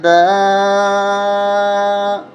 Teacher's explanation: 5 الف تک کھینچیں گے، بڑی مد ہے